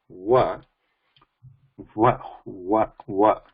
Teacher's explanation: it is not purely oshtham, it's a dantostham, because the danta, the air is passing or passing over the teeth